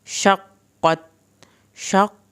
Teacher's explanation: काफ़ के ऊपर जो शद है उसको अदा करेंगे, कॉफ को पुर करके पढ़ेंगे